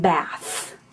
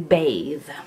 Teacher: interdental fricatives which are the sounds made with the tongue in between your teeth